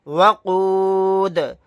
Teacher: آیت کرنے کی صورت میں دال کو ساکن بنائیں گے اور قلقلہ بھی کریں گے